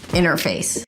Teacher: Now when the T appears after an N, it is often dropped. So you may say something like ɩnər-feɪs, and then it's just the word face, as in look at her face. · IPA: ˈɪnəɹfeɪs